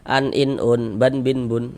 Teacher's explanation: Nah, ini tanwin nih. Tanwin itu kalau kita ucapkan ada huruf nun sukun tuh di ujungnya tuh.